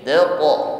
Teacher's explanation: Taqa, huruf qaf sukun, jangan ragu-ragu kita tampakkan bunyi yang memantul atau sifat qalqalah yang menyertainya